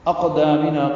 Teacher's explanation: قاف ساکن پہ قلقلہ ہے